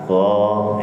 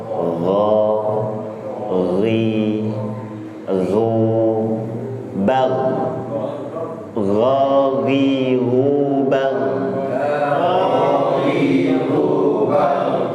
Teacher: akar lidahnya itu menghimpit ya Pak, sehingga aliran udara yang mau keluar itu memaksa masuk, sehingga ada timbullah getaran. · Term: huruf gha